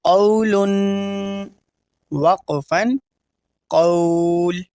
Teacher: حروف لین کو ہم بغیر کھینچے بغیر جھٹکا دیے نرمی سے پڑھتے ہیں اور تنوین کے آخر میں ہم غنہ کرتے ہیں